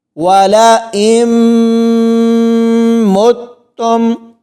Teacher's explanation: واو زبر وا، لام زبر لا، حمزہ میم زیر ام، والا ام، میم تا پیش مت، میم پیش تم، مت تم، والا ام مت تم، یعنی حمزہ کو میم کے ساتھ ملایا تو پورا غنہ کریں گے، میم کو تا کے ساتھ ملایا تو یہاں پر سختی سے پڑھا جائے گا۔